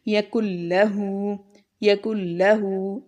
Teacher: یہاں پر دیکھیں نون ہم نہیں پڑھ رہے. ٹھیک ہے، تو اس کے بعد ہم یہاں پر غنہ نہیں کریں گے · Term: ادغام